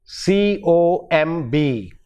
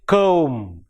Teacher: the last sound is not B but M